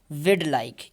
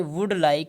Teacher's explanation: instead of say would like see would and like the would so we would has been transformed into a weak form